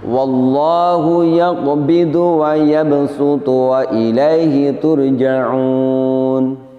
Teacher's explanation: huruf shad di sini bisa diganti bunyinya dengan huruf sin. Di antara hikmahnya kenapa shad di sini boleh dibunyikan dengan huruf sin adalah bahwa huruf shad ini memiliki sifat yang termasuk sulit sekali diucapkan, yaitu sifat itbaq. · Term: diganti dengan huruf sin